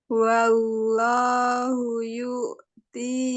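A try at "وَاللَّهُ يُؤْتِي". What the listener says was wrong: jangan yu'ti. Yu'ti, jangan yu'ti. Yu'ti, jangan yu'ti. Wallahu yu'ti, jangan yu'ti. Jangan hentak sebelum sukun. Jangan yu'ti. Bukan yu'ti. Wallahu yu'ti. Jangan yu'ti. Yu-nya jangan ditekan. Jangan yu'ti. Wallahu yu'ti. Masih yu'ti. Wallahu yu'ti saja. Jangan yu'ti.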